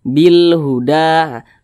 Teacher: lam qamariyah itu biasa disebut juga dengan izhar qamariah Nah karena cara bacanya yakni huruf lam dia terbaca terbaca jelas terbaca izhar begitu · Karena cara bacanya yakni huruf lam dia terbaca jelas, terbaca izhar begitu. Bil huda. Kalau samsiyah tadi huruf lamnya dia tidak dibaca, tapi kalau qamariyah huruf lamnya itu dibaca. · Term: izhar qamariyah